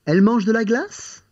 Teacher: As a statement, elle mange de la glace. Making it into a question by raising your voice.